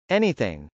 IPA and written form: ˈɛniθ.ɪŋ (anything)